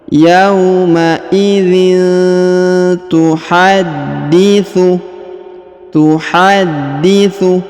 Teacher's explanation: huruf da ditahan dan ditekan karena terdapat tanda tasdid · Huruf tanwin in bertemu dengan Ta Maka didengungkan dan disamarkan